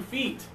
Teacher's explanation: your tongue is high in your mouth not a lot of air your tongue is touching the top